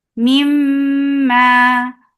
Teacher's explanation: This kunna is akmal. So keep the sound in your nose for a longer time.